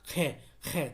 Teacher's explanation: तो मुंह से बहुत सारी हवा निकल रही है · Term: महाप्राण वर्ण